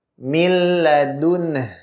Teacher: Nun sukun ini diidghamkan kepada huruf lam.